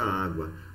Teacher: O U é semivogal e o A é uma vogal. Portanto, nós temos aqui um ditongo.